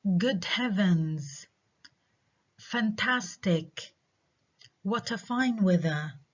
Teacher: So these exclamations or exclamation expressions have falling intonation.